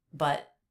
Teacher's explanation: It was the end of my thought. It was a stop T. But. I stopped the air.